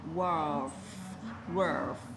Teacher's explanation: Xong các bạn cong lưỡi chữ L vào chữ F và bật hơi chữ F đúng không?